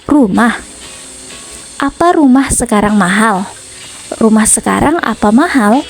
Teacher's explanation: kalimat tanya atau interrogatif yang ditandai dengan pola intonasi datar naik